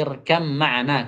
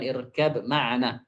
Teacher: Maka ba itu akan hilang secara keseluruhan, kata beliau. Tidak ada tersisa lagi huruf ba itu. Pengucapannya berubah menjadi irkam ma'ana, kata beliau, bukan irkab ma'ana. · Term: idgham al-mutajanisain